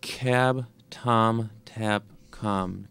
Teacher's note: The k causes him to raise his tongue dorsum up toward the back of the hard palate and the soft palate.